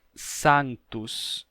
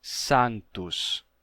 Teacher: o S, no latim, lá no período clássico, representava um som que era um pouquinho chiado. Não era sa, e sim sa.